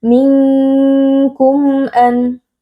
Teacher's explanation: nun sukun yang bertemu dengan huruf kaf, hukumnya adalah ikhfa hakiki. Cara membacanya kita baca dengan samar dan berdengung